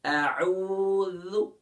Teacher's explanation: ذال سافٹ ہے، یہ حروف لثویہ میں سے ہے جہاں سے ثا ادا ہو رہا ہے، یعنی کہ سافٹ کریں گے۔